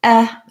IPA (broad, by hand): ɛ